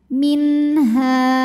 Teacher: ada Alif didahului harakat fathah maka huruf ha panjang dua harakat · sambil dengung bacanya annaakula minha Min ada hukum izhar halqi sebab nun sukun menghadapi huruf halqi atau huruf tenggorokan yaitu ha maka cara baca Nun sukunnya adalah jelas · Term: Mad Thobi'i, mad tabi'i dhahiri